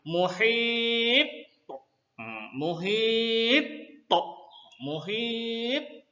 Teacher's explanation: menekankan qalqalah tersebut dengan lebih kuat sehingga pantulan lebih kuat daripada bacaan qalqalah sugra